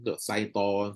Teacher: meletakkan makhraj ke hadapan sedikit dari tengah lidah, lalu keluar suaranya hampir sama dengan huruf sin. Baca shin tapi bunyi sin.